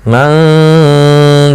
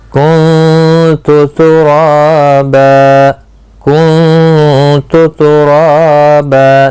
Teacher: دیکھو آواز ناک میں, ناک کے بھانسے سے گنگنی آواز آتی ہے اور زبان تالوں کے ساتھ نہیں لگتی